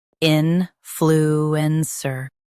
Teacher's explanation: Stress in and keep sir soft.